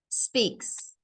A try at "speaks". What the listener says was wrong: be careful not to put an e sounds like you said speaks so you've got to start strong on the S